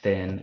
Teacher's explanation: a th sound like in thin a voiceless dental fricative